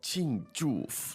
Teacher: Now, 庆祝, two fourth tones there.